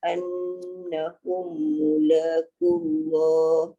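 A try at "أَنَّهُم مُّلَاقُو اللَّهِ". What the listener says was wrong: annahum mula anna tadi dah dengung dah, tapi hum tu kena dengung juga.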